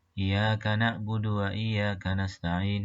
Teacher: Tidak tasydid atau meringankan bacaan ya pada kata iyyaka. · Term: takhfiful ya